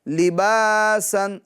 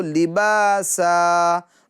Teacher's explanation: دو زبر کی تنوین کو الف سے بدل دیں گے